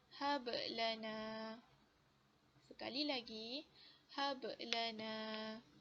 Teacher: detakan dia agak perlahan ya, sedikit perlahan berbanding qalqalah kubra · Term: qalqalah sughra